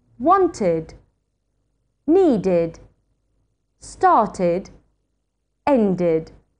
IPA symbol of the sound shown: id